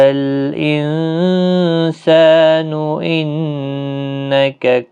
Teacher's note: انسان نون کا اخفاء ہوگا، نون مشدد پر غنہ ہوگا